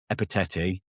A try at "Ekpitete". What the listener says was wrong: Ekpitete, it's a K.